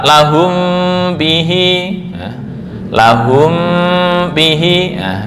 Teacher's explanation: Ini kan mim sukun yang bertemu ba, bukan tertutup 100% tapi remang-remang.